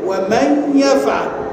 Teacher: ان انا النون ادخلتها، قلبتها ياء، النون قلبتها ياء وابقيت غنتها وادخلت الياء في الايه؟ في الياء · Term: ادغام